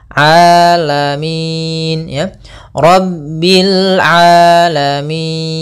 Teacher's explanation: Hati-hati jangan sampai merubah huruf ainnya menjadi hamzah. Banyak yang terjadi kesalahan dalam pelafalannya, yaitu mengganti dengan alif atau hamzah.